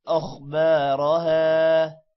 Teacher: خا موٹا ہوگا اور را بھی موٹا ہوگا